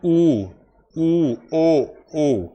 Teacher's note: होठ गोल होते हैं, होठ गोल हो जाते हैं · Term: व्रतमुखी